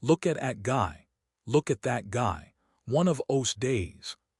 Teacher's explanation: In rapid casual American English, the th often gets dropped or softened in those and that especially after a consonant.